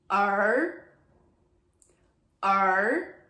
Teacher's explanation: it's very much in the back of your throat, and your tongue is flipped all the way up